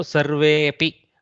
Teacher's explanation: where the avasana or the virama remains, but the akara elides